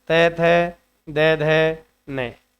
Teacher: हमारी जीभ जो है ना वो दांतों को जाकर टच करती है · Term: दंत व्य वर्णों